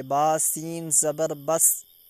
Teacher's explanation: سین جو ہے حروف قلقلہ میں سے نہیں ہے تو یہاں پہ آواز فوراً روک لیں گے، اس کی آواز واپس نہیں آئے گی۔